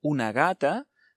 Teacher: si decimos una gata delante de la g tenemos una vocal y por tanto, suena más suave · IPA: [γ]